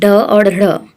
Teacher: ये उत्क्षिप्त हैं ढ और ढ़, जिनके उच्चारण में जीभ पहले ऊपर उठकर मूर्धा का स्पर्श करे और फिर झटके के साथ नीचे को आए